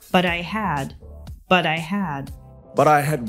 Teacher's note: the T at the end of but is pronounced with the D or flat T sound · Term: flap T sound